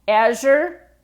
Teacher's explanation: And especially if you're talking a little bit fast or you don't get that vibration in Azure